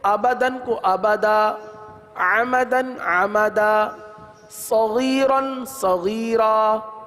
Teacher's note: دو زبر کی تنوین کو الف سے بدلتے ہیں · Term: وقف